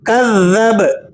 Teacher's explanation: با پر آپ نے جزم کی حالت میں قلقلہ بھی ادا کرنا ہے، جب وقف کریں گے تو با ساکن ہو جائے گا اور با ساکنہ پر آپ نے قلقلہ ادا کرنا ہے، یعنی اسے پلٹتی ہوئی آواز کے ساتھ ادا کیا جائے گا